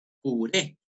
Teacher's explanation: Son las voces que llevan la mayor fuerza de voz en la última sílaba. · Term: agudas